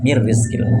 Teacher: Nun mati ketemu ro nunnya enggak lagi terbaca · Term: idgam kamil